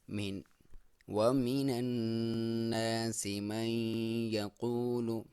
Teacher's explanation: یہاں پہ نون مشدد ہوگا تو ایک الف کے برابر آپ غنہ کریں گے، ناک میں سے آواز نکالیں گے